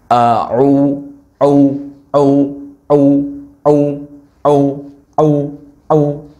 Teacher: tidak ada udara yang menghembus ketika kita melafalkan huruf Ain